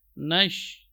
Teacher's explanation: huruf sya, ini huruf yang keluar dari tengah-tengah lidah. · Intisyarur rih, menyebarnya udara fil fam, itu di mulut. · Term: tafashi